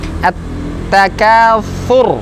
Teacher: tidak seperti huruf sin, tapi sedikit maju ke depan lidahnya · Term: huruf sa